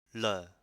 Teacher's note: You have to roll your tongue. So the L is actually rolled. So it's not a flat L like la, it's la.